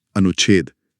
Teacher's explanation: अगर छोटे स्वर के बाद छ आ जाए तो बीच में आधा च जुड़ जाता है। जैसे अनु प्लस छेद। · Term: छ का नियम